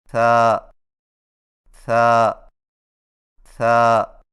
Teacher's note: हुआ था की अदायगी में जुबान की नोक को सनाया और लिया के अंदरूनी किनारों से नरमी से लगाकर बारीक आवाज में पड़े